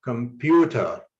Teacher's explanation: you highlight the second syllable pew to show that the stress should be on this syllable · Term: word stress